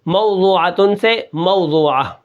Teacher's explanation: پہلا جو واو ہے وہ واو لین ہے، دوسرا واو جو ہے وہ واو مدہ ہے. عین کو بالکل نہیں کھینچیں گے اور عین کو تھوڑا زور لگا کر پڑھیں گے. اس طرح آگے آخر میں جو وقف ہے اس کو وقف بالابدال کہتے ہیں.